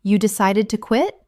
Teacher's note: Utilizing a rising intonation. This invites them to elaborate on their reasons.